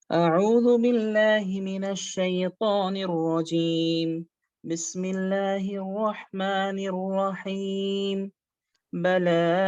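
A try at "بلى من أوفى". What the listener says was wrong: একটু ঠোঁট গোল হচ্ছে, রয়ের বেলায় আপনার ঠোঁটটা মোটামুটি গোল হচ্ছে। ঠোঁট গোল হচ্ছে।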